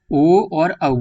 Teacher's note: ये दोनों जो हैं ये कंठ से उच्चारित, कंठ और ओष्ठ से उच्चारित होते हैं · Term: कंठोष्ठ